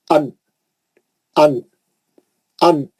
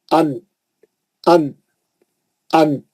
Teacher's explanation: जबान की नोक जाके मसोड़ों को लग रही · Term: नून